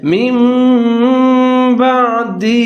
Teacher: تنوین کی آواز کو میم کی آواز کے ساتھ تبدیل کر دیں گے اور تھوڑا سا غنہ کر لیں گے